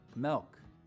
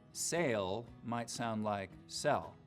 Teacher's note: in some Utah accents though some front vowels get lowered before L sounds